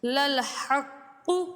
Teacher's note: قاف حروف قلقلہ ہے، اور قلقلہ حروف جب مشدد ہوں تو ان میں قلقلہ خوب ظاہر ہوتا ہے۔